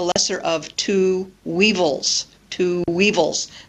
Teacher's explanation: notice the W that is linking the two words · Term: w Glide